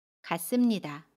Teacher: 같습니다는 같습니다 라고 발음해요. 받침 티읕은 받침소리 디귿으로 발음하고요. 습은 씀으로 발음합니다.